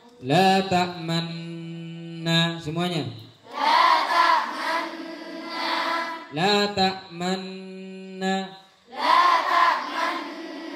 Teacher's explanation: Dibaca ismam memunyungkan mulut ke depan seperti orang mencium.